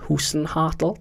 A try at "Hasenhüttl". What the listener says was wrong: Almost. Hasenhüttl. You've got your U and your A's fixed up for the wrong way.